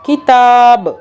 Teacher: تا کو ہم نے کھینچا کیونکہ تا کے اوپر کھڑا زبر ہے، ایک الف کے برابر کھینچا